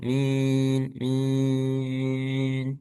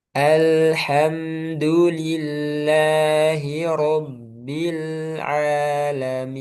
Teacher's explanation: Kalau tadi rabbil alamin min itu masuk hidung. Nah, yang benar tidak masuk hidung. Karena aljauf rongga mulut dan rongga tenggorokan. Jadi bukan rongga hidung.